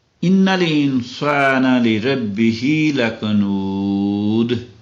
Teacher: دو پیشیں ہیں تو ہم وہاں جا کے رک گئے ہیں تو دونوں پیشیں گر گئیں. وقف کا یہ قاعدہ ہے کہ اگر دو پیشیں ہوں یا دو زیر ہوں یا ایک پیش ایک زبر ایک زیر ہو تو وہ نہیں پڑھی جاتی عام طور پہ.